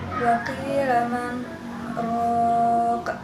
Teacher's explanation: Selanjutnya manrok adalah bacaan saktah yaitu berhenti sejenak sebelum melanjutkan ke bacaan selanjutnya dan tidak bernapas selama 2-4 harokat. Yang selanjutnya rok adalah bacaan qalqalah kubro sebab huruf qalqalah yang matinya karena waqaf.